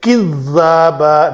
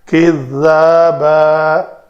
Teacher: اس ذال میں شدت نہیں آنی چاہیے